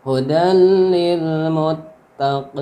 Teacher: Maka berubah menjadi mad arid li sukun. dipanjangkan 2, 4 sampai 6 harokat.